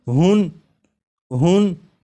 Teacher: یہاں پر ہا کے اوپر 2 پیش یعنی تنوین ہے، تو جب ہا کو پڑھیں گے تو آخر میں نون ساکن کی آواز آئے گی